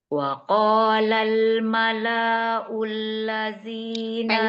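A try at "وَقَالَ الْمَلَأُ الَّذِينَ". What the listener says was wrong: Pendek lahnya. Wa qalal mala'ul ladzina kafaru. Enggak mala'ul ladzina. Pendek gitu lahnya. Ada suara yang double.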